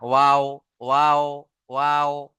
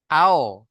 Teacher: দুই ঠোঁট না মিলে মাঝখান থেকে উচ্চারণ হয়, অর্থাৎ দুটো ঠোঁট মিলবে না